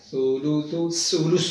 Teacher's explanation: सुलुसु, इसमें दो सा हैं, दोनों को नरमी के साथ ज़बान का किनारा सामने वाले ऊपर वाले दो दांतों के सिरे से जब लगेगा तो सुलुसु अदा किया जाएगा। सुलुसु, सुलुसु नहीं कर देना, सुलुसु, सु सु, ये आवाज़ सी की आवाज़ नहीं।